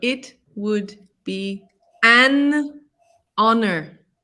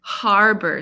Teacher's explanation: with honor the h is silent so it's a vowel sound